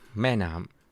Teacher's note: speak more naturally, you get different ratio, different compression, right? แม่ has been compressed. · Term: duration